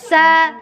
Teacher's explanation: Rasakan kalau sa keluarnya itu letaknya dari ujung lidah.